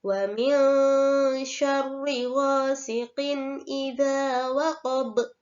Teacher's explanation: Wa min syarri dibaca samar antara bunyi n dan bunyi nge dan dinamakan bacaan ikhfa